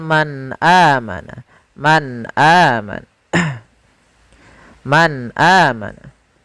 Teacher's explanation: suara nunnya harus jelas, tidak boleh ditahan, tidak boleh man amana, tidak, tapi langsung saja man amana. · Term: izhar